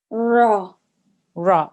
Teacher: you don't need to make a ha sound at the end there shouldn't be any extra air coming out